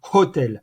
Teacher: h aspiré donc on entend beaucoup plus que dans le français